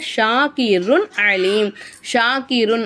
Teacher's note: மேல சத்து இருக்கனால நல்லா அழுத்தி சொல்லணும் ஷக்கிருன் அலிம் ஷாக்கிருன் அப்படின்னு சொல்லும்போது தன்வினுடைய குறியீடுக்கு அடுத்துதான் ஐன் வந்துருக்காமா ஐன் வந்து இஹாருடைய எழுத்து அப்போ தன்வினுடைய குறியீட நம்ம வெளிப்படுத்தி உச்சரிக்கணும் அலிம் அப்படிங்கும்போது மீமுக்கு மேலக்கூடிய தோப்பேஷை எடுத்துட்டு மீமுக்கு சுக்கு வச்சு நம்ம நிப்பாட்டிக்கணும்